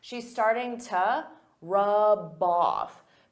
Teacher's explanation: instead of to you can use an unstressed T